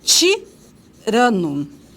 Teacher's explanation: ele é uma consoante africada, alvéolo palatal, desvozeada